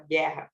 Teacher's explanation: a gente não escuta o U